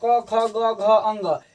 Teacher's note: जैसे क एक बार करके देखेंगे तो क यानी कंठ से स्टार्ट हो रहा है, तो इसे हम कंठ व्यंजन कहते हैं।